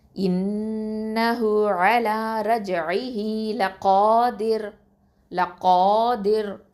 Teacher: இந்த ரா வந்து லைட்டாக தான் சொல்லணும், ஏன்னா அதுக்கு முன்னாடி உள்ள எழுத்து வந்து கெஸ்ரா வந்திருக்குது